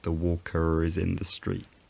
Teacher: the historical r sound appeared again when it was needed to link together two vowels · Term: linking r